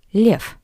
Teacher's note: the voiced consonant V at the end of this word sounds like the paired voiceless consonant F